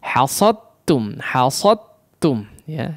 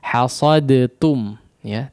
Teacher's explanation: Jangan ada efek-efek huruf dal, apalagi sampai jelas ya mengqalqalahkan huruf dal ya. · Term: idgham mutajanisain